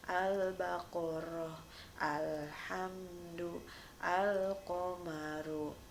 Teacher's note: Cara membacanya jelas, namanya alif lam qamariyah, alif lamnya dibunyikan.